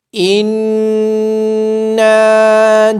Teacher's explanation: نون مشدد ہونے کی وجہ سے نون پہ غنہ کیا جائے گا. نون کے بعد الف مدہ ہونے کی وجہ سے نون کو لمبا بھی کیا جائے گا.